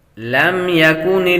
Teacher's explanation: میم سکن کے بعد با اور میم کے علاوہ کوئی اور حرف آ جائے تو غنہ نہیں کرتے، یہاں پر غنہ نہیں کریں گے۔